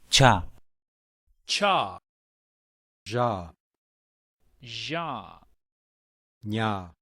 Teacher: The palatals are made with the back of the tongue touching the palate or the roof of the mouth.